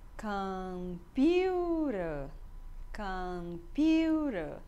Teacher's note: A sílaba mais forte é na segunda sílaba, no piu.